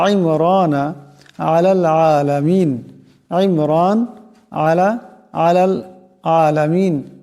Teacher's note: এই আইনের আওয়াজটিকে গলা থেকে আনতে হবে